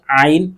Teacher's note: നമ്മുടെ തൊണ്ടയുടെ മധ്യഭാഗത്തുനിന്ന് വരുന്ന ആ സൗണ്ട് ആണ് ഐൻ